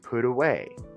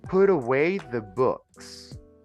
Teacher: we have to pronounce the T between two vowels like an R